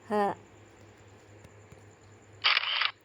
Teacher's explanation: Lalu ada bunyi ha, terdengar seperti orang tertawa, tetapi suaranya dari pangkal tenggorokan atau tenggorokan yang bagian bawah, bukan dari dada.